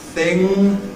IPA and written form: θɪŋ (thing)